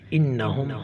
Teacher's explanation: نون مشدد ہے، غنہ کیا جائے گا